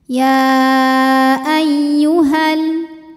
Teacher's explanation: sukun bertemu sukun tidak bisa dibaca sehingga sukun pertama dilepaskan. Jadi ha kalau wasol pendek.